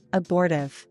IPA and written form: əˈbɔr tɪv (abortive)